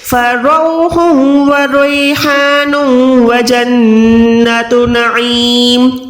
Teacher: عین کو حلق کے درمیان سے · میم دو زیر تو ہم نے میم کو ساکن کرنا ہے